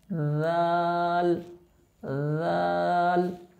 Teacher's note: লাল উচ্চারণ করার সময় আমাদের জিহ্বার আগা উপরের দুই দাঁতের আগার সাথে লাগবে।